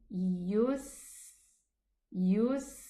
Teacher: Let the sin sound run. It has Rikhwah and the whistling sound also.